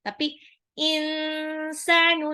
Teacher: Jadi bukan insanu, tapi insanu, nunnya agak disamarkan, ditahan bacanya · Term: ikfa